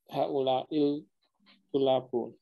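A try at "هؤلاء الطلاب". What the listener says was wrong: Nah, karena to itu adalah huruf syamsiah, maka bacanya seperti bertasdid. Haula'it tulabu.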